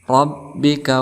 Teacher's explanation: ra berharakat fathah, maka kita hukumi sebagai tafhim, artinya tebal